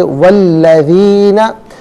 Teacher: मिलाकर पढ़ने की सूरत में वाव को अल्लज़ीना के लाम के साथ मिलाएंगे, दरमियान से अलिफ यानी हमज़ा को हज़फ़ किया जाएगा